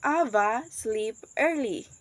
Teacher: the rising juncture here is after the words Ava indicates that the speaker is addressing someone directly